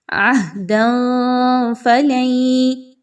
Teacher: پر دو زبر کی تنوین، اس کے بعد فا کا حرف، تو یہاں پر آپ نے جو تنوین کی آواز ہے یعنی دو زبر کی آواز ہے، اس کو آپ نے کلیئر نہیں پڑھنا، یہاں پر اخفا کرنا ہے